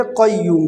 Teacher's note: قیوم میں جو قاف ہے یہ بھی موٹا والا ہے، اس کو پر پڑھیں گے۔ اکثر لوگ مسٹیک کرتے ہیں، اس کو باریک پڑھتے ہیں، قیوم پڑھتے ہیں۔